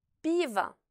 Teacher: le O non accentué se trouve après la voyelle accentuée. Il se prononce donc comme un A bref.